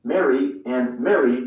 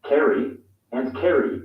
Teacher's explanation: in the us mary and mary sound the same kerry and kerry sound the same